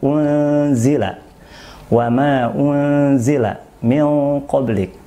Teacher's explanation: bunyi dengungan itu bukan keluar dari rongga mulut, tapi bacaan dengung, suara dengung itu keluar dari rongga hidung kita. Nah, jadi suara dengungan itu keluar dari rongga hidung. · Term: gunnah